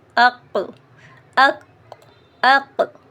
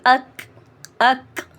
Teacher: زبان کی جڑ یا زبان کا آخری حصہ اس کے مقابل تالو کے نرم اور سخت حصے سے ادا ہوتا ہے۔ کاف کا مخرج قاف سے تھوڑا نیچے ہے